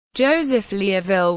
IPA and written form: ˈdʒoʊzəf ˌliuːˈvɪl (Joseph Liouville)